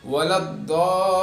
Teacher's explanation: ضاد ہے، حروف مدہ یعنی مدہ ہے، وہاں پہ کیا ہے، مد متصل ہے، اس کو 4 الف کے برابر کھینچنا ہے · کو 4 الف کے برابر کھینچنا ہے، پھر اس کے بعد پھر وہاں پہ لام پر تشدید ہے، پھر تھوڑی دیر اس پہ رکیے